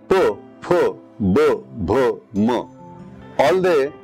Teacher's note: all these consonants are uttered using your lips. Your lips are touching each other.